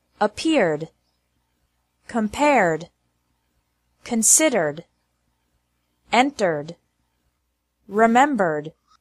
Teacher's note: ED is pronounced like D with no extra syllable after verbs ending with an R sound.